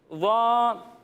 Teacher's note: جب ہم اس کی ادائیگی کریں گے تو اس میں سیٹی کی آواز نہیں آئے گی اور اسے ہم موٹا کر کر پڑھیں گے